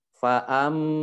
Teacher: mim tasjid dibaca gunah ya 2 harokat.